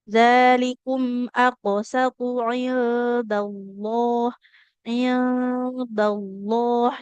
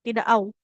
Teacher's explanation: Jadi enggak ada bunyi wau sukunnya. Jadi enggak jangan lagi baca lafaz Allah au tidak au tapi Allah. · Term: lam tebal